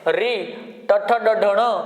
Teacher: जीभ जाके सीधी मूर्धा को जब तक नहीं लगेगी, सही प्रकार से टकार का उच्चारण नहीं होगा, ट नहीं निकलेगा।